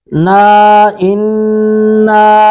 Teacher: انا نون مشدد پہ غنہ کریں گے